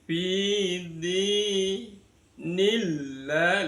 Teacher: Maka lafaz Allahnya wajib dibaca tarqiq, dibaca tipis.